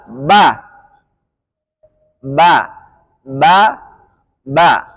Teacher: Kalau ada nafas yang keluar ketika ucapan ba, maka otomatis pengucapannya salah. Karena memiliki sifat jahr.